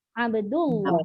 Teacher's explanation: Kalau dal itu baris depan, Abdullah, barulah dibaca dengan tebal